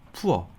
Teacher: 여기선 오어 발음이 나요. 네, 특히나 O가 끝에 R이랑 만났을 때 그런 소리가 납니다.